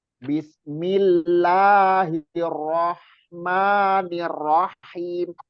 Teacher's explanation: Lamnya L-nya itu nggak yang biasanya panjang. lamnya itu ditekan aja, jangan jangan ditahan lama-lama di lam.